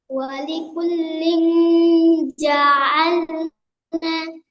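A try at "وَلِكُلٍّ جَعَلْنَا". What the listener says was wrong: ওয়ালি কুল্লিং, এই গুণনাটা একটু বেশি করে করার চেষ্টা করবেন। ওয়ালি কুল্লিং জাআলনা।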